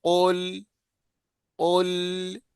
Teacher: तो कुल में क्या, लाम को बारीक पढ़ेंगे,